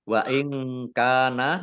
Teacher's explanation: Wa in kana nun sukun bertemu dengan huruf kaf, bacaan ikhfa dibaca samar-samar.